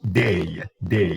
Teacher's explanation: when you say day by itself you transcribe it with a diphthong a two symbols but they are a single sound